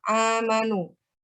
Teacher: ada fathah yang berdiri itu dibaca panjang.